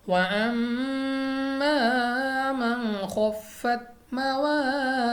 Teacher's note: میم مشدد غنہ کر کے پڑھیں گے ، اس کے علاوہ ہمارے پاس الف سے پہلے زبر ہے